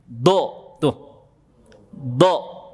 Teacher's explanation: Coba ujung lidah antum naikin ke langit-langit mulut, kemudian bunyikan do. Itu namanya dal tafkhim, huruf dal tapi tebal.